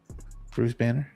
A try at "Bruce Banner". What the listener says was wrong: No, you said Brew Banner.